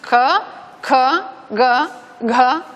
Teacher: la diferencia es, entre la oclusiva y la oclusiva aspirada, la diferencia es la aspiración